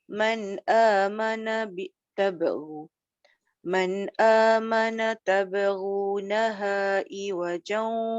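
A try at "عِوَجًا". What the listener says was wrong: Tak masuk ain. Tabghunaha iwajan.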